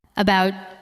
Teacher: We do not usually say every part with equal strength. We say about, with a light first sound and a stronger second part.